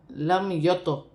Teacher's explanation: تو ساکن ہے، قلقلے والا حرف ہے